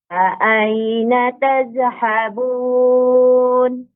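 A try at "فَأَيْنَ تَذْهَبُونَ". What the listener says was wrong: Huruf zal tidak boleh memantul, Ummu ya. Tidak boleh tazhabun, tetapi ditahan tazhabun. Fa aina tazhabun.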